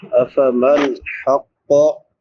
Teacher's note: नून साकिन पे इजहार होगा क्योंकि बाद में हुरूफ हल्की में से हा है। हक़ क़ाफ और पढ़ी जाएगी क्योंकि क़ाफ हुरूफ मुस्तालिया में से है।